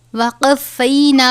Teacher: قاف ہے حروف مستعلیہ میں سے، ہمیشہ اور ہر حالت میں پر یعنی موٹا پڑھا جاتا ہے